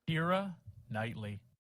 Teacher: that whole initial consonant was missing